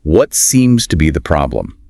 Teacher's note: it has that downward inflection typical of what questions